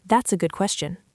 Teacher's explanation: Notice where the stress goes. The stress hits the word good.